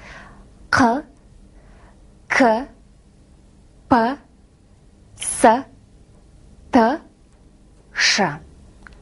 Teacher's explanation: перед вами глухие согласные казахского языка